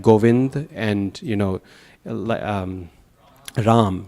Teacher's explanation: you often in Bengali and in Hindi, you drop the final A at the end of words